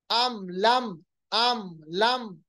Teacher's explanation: अम लम बिल्कुल इजहार, कोई इख्फा नहीं, कोई गुन्ना नहीं, कोई हमने जिसको हम कहते हैं इदगाम नहीं किया।